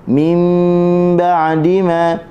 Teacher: Mim tutup mulut dengan 2 harakat tanpa kita tekan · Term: iqlab